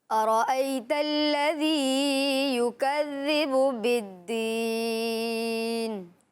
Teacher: جہاں یا لین تھا وہاں نرمی کے ساتھ ادائیگی کی، اور جہاں یا مدہ تھا وہاں انہوں نے کھینچ کر پڑھنے کی کوشش کی